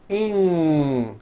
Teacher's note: Ing comes out of your nose. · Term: NG sound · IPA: ŋ